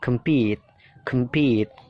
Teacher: Yang ketiga, compete, jadi pitnya itu ditekan, kemnya itu kan dibaca pecel ya, kem ya, jadi singkat, kemnya singkat, compete, pitnya itu ditekankan